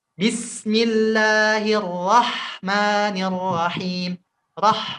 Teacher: nggak hanya bismillah, bisnya rokhawah, rohnya juga rokhawah ya